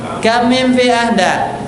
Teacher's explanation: Mimnya ditahan karena ini idgham. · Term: gunnah